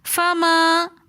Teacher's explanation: فما ربحت میں فما کے اندر الف مدہ آ رہا ہے، کیونکہ الف ساکن ہے، اس سے پہلے زبر ہے، تو الف مدہ کو ہم 1 الف کی مقدار کھینچ کر پڑھتے ہیں، اس لیے ہم فما پڑھ رہے ہیں۔